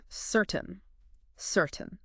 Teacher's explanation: the stress is on the first part of the word and listen to that middle part, that tain sound. · the vowel sound in certain often reduces to what we call a schwa sound. It's like this very short, unstressed sound, kind of like the a in about. · Certain. So again, the stress is on the first part of the word